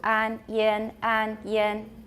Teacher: Can you feel your tongue being a bit higher for yin? 因 为 E 是 很 高 的.